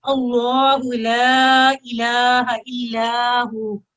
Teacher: اللہ تشدید سے پہلے فتح ہے اللہ کے، اور اس کو بھی ہم نے پر کر کے پڑھنا ہے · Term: لام الجلالہ